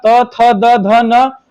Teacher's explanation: त वर्ग का उच्चारण स्थान दंत हो जाएगा।